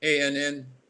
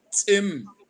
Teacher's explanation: The anglicized version, the T is dropped or silent.